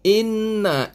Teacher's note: Inna, in ini wajibul gunnah. Kita kena dengungkan dia sekadar 2 harakat.